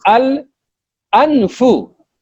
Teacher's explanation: When you pronounce al anfu, you are disconnecting al from anfun in pronunciation. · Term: hamzatul qat'